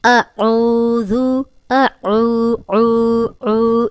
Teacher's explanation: یہ دیکھیں ہم پہلے بھی جب اکثر اسٹوڈنٹ ایسے پڑھ رہے ہوتے ہیں یا لیڈیز ایسے پڑھ رہی ہوتی ہیں، اعوذ باللہ، اعوذ، تو اعوذ نہیں ہے، اعوذ۔ اب ذال کو ہم نرم بھی پڑھیں گے، سیٹی کی آواز نہیں آئے گی